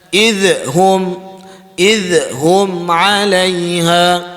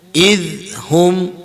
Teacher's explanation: Dia huruf zal, kita mesti tidak ada lantunan dia. Dia kena matikan terus.